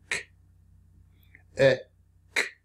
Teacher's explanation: the tongue up against the top back of the mouth towards the back of your tongue.